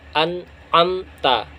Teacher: disuruh al-fatihah yaitu sirotol ladzina an amta alaihim nah an amta nun mati ketemu ain itu dibaca jelas tanpa dengung tanpa samar-samar tanpa dikasih roket atau ditahan dua harokat itu tidak ada langsung